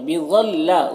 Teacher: ظا حروف مستعلیہ میں سے پر پڑھیں گے، لام الف مدہ ہے، 1 الف کے برابر کھینچیں گے۔